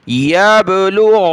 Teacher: कलकला और गैन को नून के साथ मिला, नून पर गुन्ना, गैन को गले से निकाला गैन करके, इसकी जगह आपने गाफ नहीं पढ़ना